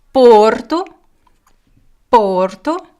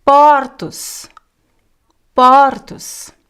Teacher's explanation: The singular is closed, the plural is open.